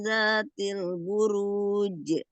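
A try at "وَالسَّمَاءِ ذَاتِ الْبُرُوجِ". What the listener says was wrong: Sebentar perhatikan di kata buruj ya. Jadi tidak dibaca buruj, bu-nya tidak diangkat. Buruj, buruj. Wasama idzatil buruj.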